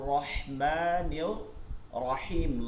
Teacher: রাহমানির রাহিম এটা হচ্ছে লম্বা হা আর রহমানির রাহিম লম্বা হা লম্বা হা টা কোথা থেকে উচ্চারণ হয় এই গলার মধ্যখানে